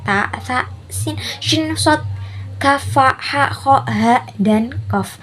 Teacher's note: Tidak bersuara voiceless, yaitu pita suara itu tidak bergetar